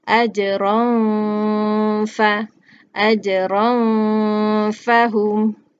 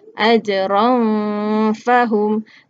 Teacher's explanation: ran itu dia tidak jelas, eh, tetapi bunyinya itu bersedia untuk masuk kepada huruf fa dan dia didengungkan ataupun dia dipanjangkan